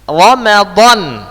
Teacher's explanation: Maka tempat keluar huruf dot adalah pinggir lidah dengan gigi geraham. Ya, gigi geraham atas.